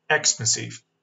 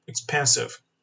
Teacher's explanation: stress falls on the second syllable.